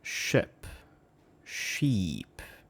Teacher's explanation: the difference between the two is just the length of that E vowel. Ship, very short. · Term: long E versus short E sound